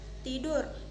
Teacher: Ciri-ciri mati oral apikodental plosif. Contoh kata tidur.